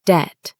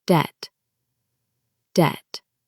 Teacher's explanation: Some people say debt, pronouncing the B, but the B is silent. We say debt.